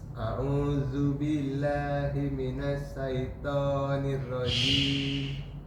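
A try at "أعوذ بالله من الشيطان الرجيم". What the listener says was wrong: Sya. To-nya ditekan lagi.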